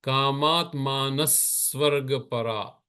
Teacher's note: The visarg gives you the sound that will easily move into the sa sound of swarga. · The paraha, the visarga disappears before the ja, and that's another part of the sandhi. Now, when you say kamatmanah svarga paraha, what will the visarga sound turn to? It becomes a s sound.